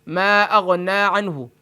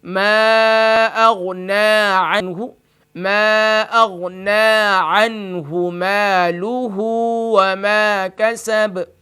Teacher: اب اکثر رات پڑھتے ہیں اس کو ما اغنى عنہ، یعنی نون کو کھینچتے نہیں ہیں. جب نون پر کھڑی زبر کی علامت موجود ہے تو اس کو ایک الف کی مقدار کھینچ کر پڑھیں گے